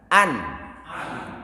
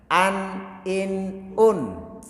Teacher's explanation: Rasakan ketika nun itu disukun berarti ujung lidah menempel di langit-langit. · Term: nun sukun